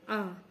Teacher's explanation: जब हमारा पूरा मुंह खुलता है तो आ बनता है